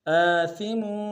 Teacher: میم کے اوپر تنوین غنہ کریں گے